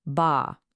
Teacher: So, this is all about mouth shape. For the a sound in ba, which we know can mean dad, your mouth is open, wide, and relaxed. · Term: ah sound